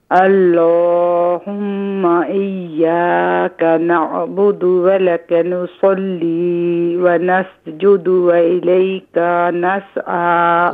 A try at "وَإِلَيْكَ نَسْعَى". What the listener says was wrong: وإليك میں کاف کو تھوڑا سا کھینچ دیا, شارٹ کر.